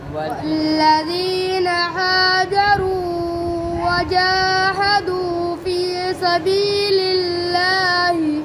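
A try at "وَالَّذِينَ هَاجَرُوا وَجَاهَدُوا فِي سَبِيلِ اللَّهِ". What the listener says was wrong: अब हाजरू को ज़्यादा लंबा कर रहे हो, आप पढ़ो भाई।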